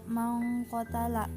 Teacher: Hukumnya ikhfa karena huruf nun mati bertemu huruf kaf. Cara membacanya samar dengan dengung dan ditahan selama 3 harokat. Cara pengucapan seperti bunyi eng.